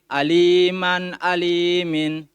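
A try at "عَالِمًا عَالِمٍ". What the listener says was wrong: Afwan, kalau bisa kasih jeda sedikit. Aliman, alimin. Nah, nanti orang menyangka antum sambung di situ. Pisah. Aliman, alimin.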